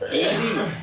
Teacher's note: ली और तकार और सकार ये दांत से पैदा होते हैं। ली बिना दांत लगाए, जिसके दांत नहीं है वो बोल ही नहीं पाएगा।